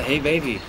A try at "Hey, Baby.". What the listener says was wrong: Nein, nicht so weich, nicht so weich. Bisschen ja, dümmer, denn? Bisschen dümmer. Versuch's bisschen dümmer. Probier's dümmer. Mach's mal wie im Film. da machen sie auch mal, da setzen sie immer so komische Augen auf.